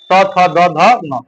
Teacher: त वर्ग का उच्चारण स्थान जो होता है वो दंत होता है साथियों